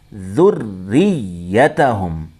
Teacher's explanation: را کو بھی ڈبل پڑھیں گے، یا کو بھی ڈبل پڑھیں گے